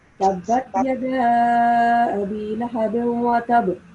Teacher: Make sure that you make a slight jerking sound at ba sound whenever it's coming at the end of the verse, because ba is one of the huruf qalqala.